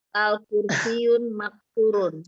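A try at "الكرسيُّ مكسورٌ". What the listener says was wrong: Ya, tadi al-kursiyun itu bacanya salah. Jadi al-kursiyu ya. Kalau sudah pakai alif lam tidak boleh pakai al-kursiyu maksur.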